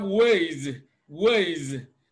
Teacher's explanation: when the plural morpheme S comes after a voiced sound, it is pronounced Z